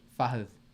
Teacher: The D is a soft pronunciation. The tip of your tongue touches the bottom of your front top teeth.